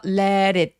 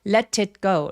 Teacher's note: 자, let it 할 때요 t가 또 모음 사이에 끼어 있죠? 그래서 let it 이렇게 굴려도 되고요. let it go. Let it go라고 티리 그냥 내도 괜찮습니다.